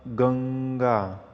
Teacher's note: ગંગામાં ગ ઉપર ભાર મૂકવામાં આવે છે